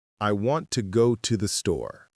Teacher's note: When I say it naturally, I stress the important words. I want go and store. The little words to andthe, they're much softer. They're almost like background music.